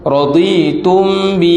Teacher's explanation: mim mati bertemu ba. Dengung situ. Raditum, rapatkan bibir gitu.